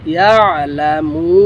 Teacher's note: মধ্যে আরজি তিন আলিফ লম্বা হবে, তিন আলিফ লম্বা করে এখানে অক্ফা করতে হবে, লাম পেশ লু, নুন জবর না, ইয়ালামুন।